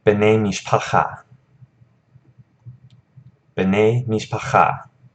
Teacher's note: And one thing I want to note about this, the reason that these changes happen is because the accent is shifted over to the second word. So you almost pronounce this like it's one word.